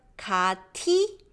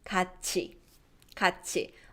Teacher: t sound when it's followed by e becomes chi